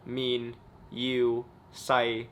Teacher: the mid-flat, tone 3, and the low-flat, tone 6, mid-low flat tone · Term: flat but not high